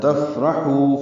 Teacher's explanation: حا وسط حلق سے ادا ہوگا، 2 حرکات لمبا کریں گے. وہ مد ہے.